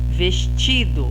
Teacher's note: Então, o ti é a sílaba mais forte. O ti é a penúltima sílaba.